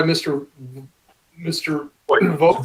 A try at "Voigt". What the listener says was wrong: Voigt. Don't pronounce the G. It's Voigt, like in Voigt footballs and basketballs.